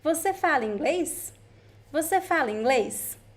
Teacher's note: You know it is a question because of the context and also the intonation. It goes up.